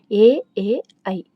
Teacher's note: కంఠ తాళవ్యములు అంటే కంఠము మరియు దవడ రెండింటి నుండి పుట్టినవి